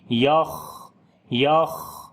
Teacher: خا کو موٹا پڑھیں گے اور صفت ہمس بھی کریں گے، سانس جاری ہوگا